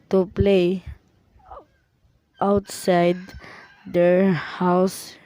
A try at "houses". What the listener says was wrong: The learner initially omitted s in houses and said housed.